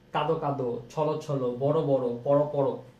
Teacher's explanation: দ্বিরুক্ত শব্দ প্রায়শই অন্ত অ ও এর মতো তথা সংবিত উচ্চারণ হয়